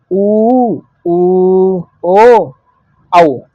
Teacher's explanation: वृत्ताकार या वर्तुल स्वर, जिनके उच्चारण में होठ बिल्कुल गोल हो जाते हैं, गोलाकार, जैसे ऊ, ओ, औ।